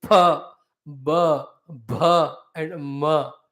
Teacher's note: And the Oshtavya, finally, the Oshta, the lips have to come together. Then only the Akshara is pronounced fully.